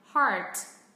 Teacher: đặc trưng của người Mỹ nó là âm r rất là nặng